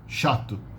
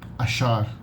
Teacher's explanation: The CH sound, very simple, like an SH in English, but it's not like Spanish with a ch. Not ch, only sh, without the initial T sound.